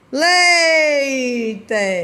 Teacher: ditongo decrescente é quando nós temos a vogal mais a semivogal né Leite né começa lá em cima depois diminui